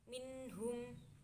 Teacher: nun sukun bertemu dengan ha dan dibaca jelas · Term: idhar halki